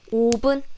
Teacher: B, B, B, B sound. Because we don't have V sound. We just say B sound.